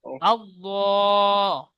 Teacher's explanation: আল্লাহ খাড়া যাবার একালিপ টান দেন।